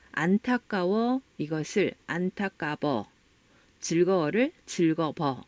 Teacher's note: 그리고 유성음, 즉 울림소리에 해당한다는 거죠. 순경음 비읍은 현재는 쓰이고 있지 않지만 경상도 사투리에 일부 남아 있습니다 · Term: 순경음 비읍의 흔적